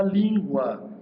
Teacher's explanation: terminada no ditongo crescente, do U para o A